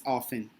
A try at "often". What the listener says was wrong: Yes, and a little bit more the O, yes? Open O, often.